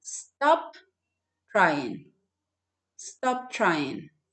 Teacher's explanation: So you connect that p sound to the t sound.